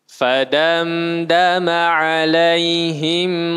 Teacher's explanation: sekali lagi ketika mimnya tak berharakat maka dia dibaca dengung tiga harakat